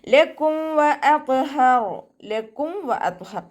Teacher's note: മീം സാക്കിനെ നമ്മൾ വ്യക്തമാക്കി മണിക്കാതെ ഇൽഹാർ ചെയ്തിട്ട് പോകുക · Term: ഇൽഹാർ ഷഫവി